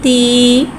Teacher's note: ता के नीचे खड़ी ज़ेर है, खड़ी ज़ेर को नीचे गिराते हुए अदा करके पढ़ेंगे। खड़ी हरकत को एक अलिफ यानी 2 हरकत के बराबर खींच के पढ़ेंगे। ता खड़ी ज़ेर ती।